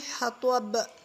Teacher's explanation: با پر کلکلا، جہاں بھی با ہوگی سکون میں جب آئے گی تو وہاں پہ کلکلا ہوگا